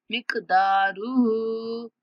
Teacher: काफ पर कलकला करेंगे, मतलब काफ की आवाज को थोड़ा सा हिलाकर पढ़ेंगे। मिक़दारुहु, दाल को थोड़ा खींचेंगे और हा को 3 सेकंड तक खींच के पढ़ेंगे।